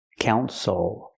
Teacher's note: The stress is on the first syllable. The second syllable is not stressed, so we don't say ill, we say oh.